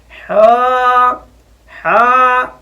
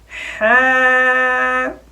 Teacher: ہا کو ہمیشہ باریک پڑھا جاتا ہے، موٹا نہ ہو جائے، یوں نہ ہو جائے ہا ہا، یوں نہ ہو جائے۔